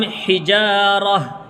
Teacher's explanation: را کو ہا میں ملائیں گے، یعنی تا کو ہا پڑھیں گے آیت کی وجہ سے، تا کو ہا سے بدل دیں گے، گول تا کو ہا سے بدل دیتے ہیں آیت کی وجہ سے، تو ہم حجارہ ایسے پڑھیں گے، اعدت للکافرین۔